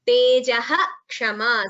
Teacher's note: whenever Visarga is followed by Ksha, the Visarga is chanted completely